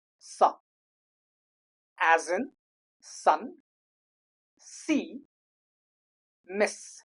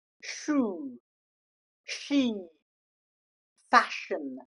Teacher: There are two kinds of S sound. One is smaller, lighter s. Another is heavier sha as in shoe, she, fashion.